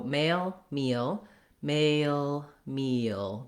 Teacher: There's no break. We just glide through all of those sounds, but they're kind of almost like two syllable words. · There's so many vowel sounds, so much length and that glide in there that it's a little bit like it's a two syllable word.